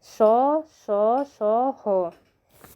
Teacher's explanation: यह यह चारों हैं हमारे अंतस्थ व्यंजन और उष्म संघर्षी व्यंजन है जिनमें जिनको बोलते समय थोड़ा हमारी स्वास में थोड़ा संघर्ष होता है